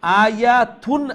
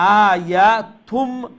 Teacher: এই নুন সাউন্ড এখন মিম সাউন্ড হইব আর গুণ হইব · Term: ইখলাব